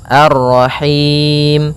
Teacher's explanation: Karena kita waqaf maka mimnya menjadi sukun. sebelum huruf terakhirnya yang disukunkan ada huruf mad.